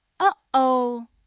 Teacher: It's a quick closing of the vocal cords that creates a brief pause in the airflow. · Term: glottal stop